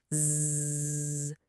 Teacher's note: Feel that little buzz, that vibration. That's a voiced sound.